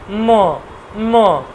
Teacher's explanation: উচ্চারণটা বলছে অষ্ঠ এবং নাসিকা। অষ্ঠ এবং নাসিকা।